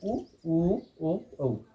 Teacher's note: वृत्ताकार का मतलब आपको बताया है कि मुख की आकृति, ओष्ठ की आकृति है वो वृत्त के समान हो जाती है, वो स्वर हैं उ, ओ, औ